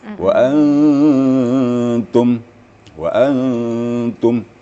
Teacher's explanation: jadi lidah kita langsung ditempatkan pada makhraj ta tapi disengaukan Nah maka jadilah samar waanttum I kemudian tadi wakaf wakaf pada · Nun mati bertemu ta. Itu tipis. Istifal. Samarnya lebih tipis gitu. Wa antum. Jadi lidah kita langsung ditempatkan pada makhraj ta. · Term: ikhfanya, Ikhfanya